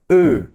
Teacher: para pronunciar esse o com trema eu faço a boca do o e reproduz o som do E